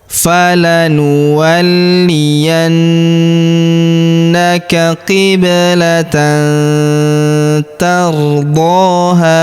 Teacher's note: Tardho huruf ha kita panjangkan dua harakat karena alif di depannya.